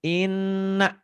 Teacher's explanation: bukan hanya double tapi ada ditahannya ada panjangnya dan ada dengungnya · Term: huruf ghunnah